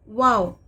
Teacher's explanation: वाव मुंह के खाली हिस्से से अदा होता है